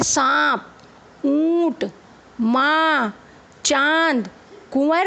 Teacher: नाक और मुंह दोनों से बाहर आएगी एक साथ तो उसे हम अनुनासिक कहते हैं जैसे सांप ऊंट मां चांद कुंवर आदि तीसरा विसर्ग विसर्ग का